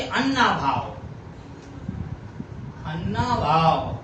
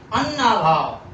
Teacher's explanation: अब इसको उच्चारण है अन्ना भाव, तो देखा आपने बड़े आ की मात्रा पर बलाघात हो रहा है,